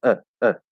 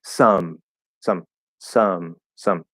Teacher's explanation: if you say uh really quickly and maybe a little lazily it's going to become an actual schwa